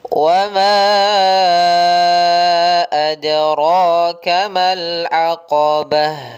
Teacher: Mad jaiz munfasil. Maka kita panjangkan 4 harakat dahulu. Dalam riwayat Hafs kita panjangkan 4 harakat.